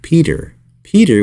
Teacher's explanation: a tongue twister today that uses this flap tea sound one time right in the beginning